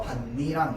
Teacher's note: 니은으로 비음화가 이루어지는 거야. 뒤에 있는 니은 때문에.